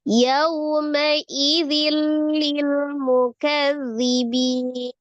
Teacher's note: Nunnya ketika disukunkan dia tingkatan gunnahnya naqisah